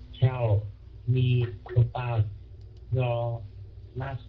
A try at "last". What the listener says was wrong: Okay, cái âm L không có được đọc thành âm N nha, bữa sửa rồi. Last, chứ không phải là last.